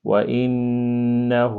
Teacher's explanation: یہ جو نون مشدد ہے یہاں پر جو ہے آپ نے غنّہ کرنا ہے